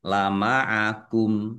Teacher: Kumnya dibaca wakaf atau berhenti dan pendek karena tidak ada tanda panjangnya.